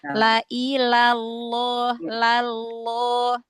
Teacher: Langsung ke lam terus langsung diangkat pangkal lidahnya. Kalau ketika tafhim lafzul jalalahnya ya.